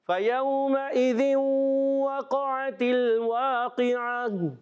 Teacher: عین ادا ہوتا ہے حلق کے درمیان والے حصے سے